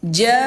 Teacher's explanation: Tuh ada angka 5. Berarti panjangnya dibaca 5 harokat atau 5 ketukan. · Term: mat wajib muttasil